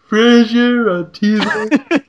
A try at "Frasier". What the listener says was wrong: It sounds like Treasure, but it's Frasier.